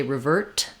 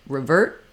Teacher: You might hear revert, where that is going to stop short and the T sound won't be let out. It depends on what's next. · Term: unreleased T